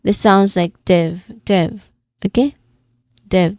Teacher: the main stress is on the div part. So yeah. This sounds like div.